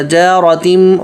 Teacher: جارتم من سجیل، جیم پتلا را موٹا. جارتم، را پہ زبر ہے، را پر زبر یا پیش ہوگا تو را ہمیشہ موٹا پڑھیں گے